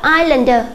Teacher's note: Các em chú ý là âm S là âm không được phát âm, chúng ta sẽ không đọc là Iceland, chúng ta đọc là islander.